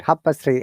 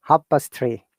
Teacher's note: l is not pronounced